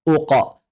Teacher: Karena qof memiliki sifat lazimah, yaitu qalqalah yang selalu tafkhim.